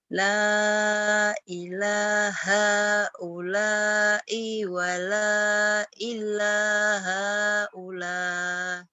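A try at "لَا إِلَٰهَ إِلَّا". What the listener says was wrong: Pandai. Cuman tadi ketahan di sini i-nya pendek.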